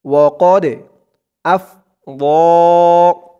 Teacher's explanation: ওয়াকদ আফযা, ওয়াকদে, কদে দালটা কলকলার হরফ ধাক্কা দিয়ে পড়তে হবে।